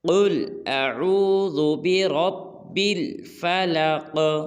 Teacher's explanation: بعض لوگ پڑھتے ہیں بل نہیں کرنا، بل سختی کے ساتھ، بل فلق۔ آخر میں جو قاف ہے اس کو ہلانا ہے کیونکہ یہ قلقلہ ہے